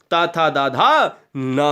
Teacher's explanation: थोड़ा सा और आगे बढ़िए, यह दोस्तों दंत पे आ जाते हैं। ये दंत जो दांत की सहायता से बोले जाएं, वो दंत यानी दंत स्पर्श व्यंजन कहलाते हैं, यानी ता था दाधा ना हो जाएगा।